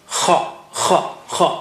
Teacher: kha comes from upper part of the throat